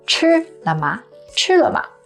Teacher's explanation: 吃 to eat is the first tone high and flat, and 了吗 they are both neutral tone, which means there's no stress. So you say it quick and kind of quiet.